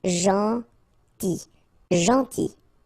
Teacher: it's a strange one because here this final L is not pronounced.